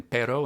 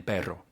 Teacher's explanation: Most of them are made with the tip or the blade of the tongue, like Spanish's two R sounds, the tap in pero and the trill in perro.